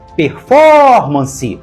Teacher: performance tem quatro sílabas e a mais forte é for performance então a palavra é proparoxítona só que · Performance tem 4 sílabas e a mais forte é for.